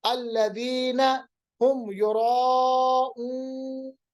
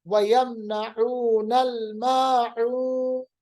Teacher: नून को साकिन बनाएंगे और वाव को लंबा करेंगे, मद आरिज लिस्सुकून।